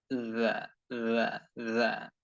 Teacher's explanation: জিহ্বার আগাকে সামনের উপরের দুই দাঁতের আগার সঙ্গে যুক্ত করে নরম করে জা, সা অক্ষরের মতো করে জা, জা, জা, জাল।